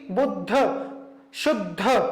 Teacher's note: ध बाद में उच्चारित हो रहा है, अर्थात वह पूरा है, उसमें अ का उच्चारण हो रहा है